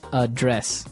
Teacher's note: the verb address has the stress on the second syllable